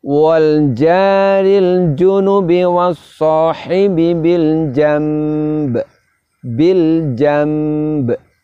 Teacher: Kita rubah bunyi nun sukunnya menjadi bunyi mim, kemudian kita dengungkan, bersamaan dengan itu kita juga keluarkan pantulan dari huruf ba. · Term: iqlab